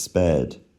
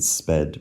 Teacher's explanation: you can form basically perfect long-short minimal pairs, as in sped versus spared